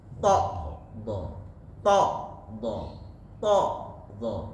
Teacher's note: ke dalam ee apa namanya syidah maka sama D dengan thah kalau kita baca D enggak ditahan maka mengalir huruf d kalau ditahan maka keluar huruf th